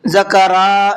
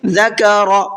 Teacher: را کو کھینچنا نہیں ہے۔ اس را کو اس لیے بتا رہا ہوں کیونکہ عام طور پر لوگ غلطی کرتے ہیں، را کو کھینچ کر کے پڑھتے ہیں، ذکرا اس طرح سے پڑھتے ہیں۔